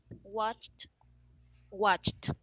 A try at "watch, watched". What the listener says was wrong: In the last one, I couldn't see any difference. Listen again. Watch, watched.